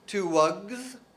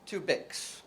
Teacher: the plural is actually Z in wug and S in bick. And it's totally predictable on the basis of whether the word ends in a sound like a g, which is voiced, or a k, which is voiceless.